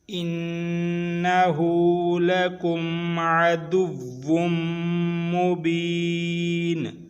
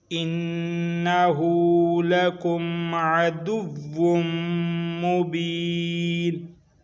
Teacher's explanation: थोड़ा सा नाक में गुन्ना करना है, वाव और मीम को थोड़ा सा खींच के लंबा करना है